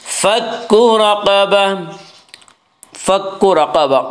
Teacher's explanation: را کے اوپر زبر اس سے را کو پر پڑھیں گے۔ رقبہ، قاف کو پر پڑھیں گے، قاف حروف مستعلیہ میں سے ہے۔